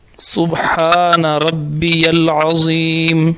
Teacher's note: سبحان کی سین جو ہے وہ باریک اور سیٹی کی مانند ہے اور ہا وہ حلق سے نکلے گا۔ سبحان ربی العظیم، عین حلق، اور آگے توئے کے اوپر اگر ایک نقطہ ہو تو اس کو زوئیں اردو میں کہتے ہیں اور عربی میں اس کو ضا کہتے ہیں اور یہ موٹا ہوتا ہے۔